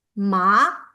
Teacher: The second tone, it's a rising, it's like uphill tone.